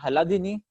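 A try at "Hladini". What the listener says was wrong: Sir, the H is silent. Ladini.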